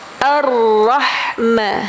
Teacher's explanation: Walaupun lamnya ada tapi tidak ada di dalam sebut sebutan terus bunyi ro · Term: alif lam Syamsi